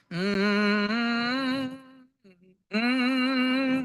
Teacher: Ditahan dan dimasukin ke rongga hidung